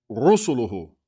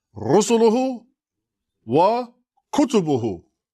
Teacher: Like try to jam it all together really quick with no long vowels. Everything is a short vowel.